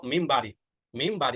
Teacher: আমরা নুনটাকে মিম দ্বারা পরিবর্তন করব দেখো নুনের উপরে ছোট একটি মিম আছে না তো এটা নির্দেশ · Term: কলাব